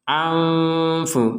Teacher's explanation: Nun sukun meeting fa dibaca secara tidak jelas